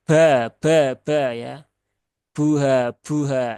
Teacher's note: seringnya ditambahkan dengan percikan udara